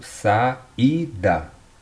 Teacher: Quando você separa, você vê que o i ficou isolado na sílaba. Então ele é um i tônico. E ele fez um hiato com o a da vogal anterior